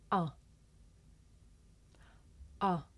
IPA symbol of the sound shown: ʌ